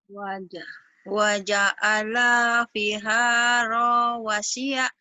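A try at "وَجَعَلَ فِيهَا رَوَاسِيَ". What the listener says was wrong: Ini pendek semua. Waja'ala fiha rawasiya. Rawa. Rawanya pendek. Rawanya pendek. Rawa. Rawa. Rawa. Rawa. Pendek. Ini pendek semua. Yang panjang cuman V sama H-nya doang. V panjang. H panjang. Sama wa. Ini doang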